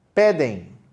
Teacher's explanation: Tem uma diferenciação, apesar de não ter o acento em pedem, nós temos também a força na última sílaba e o acento.